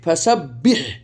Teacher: এটা হাই হত্তি, কারণ এটা কণ্ঠনের মধ্যভাগ থেকে উচ্চারিত হয়, সেজন্য তাকে বলা হাই হত্তি।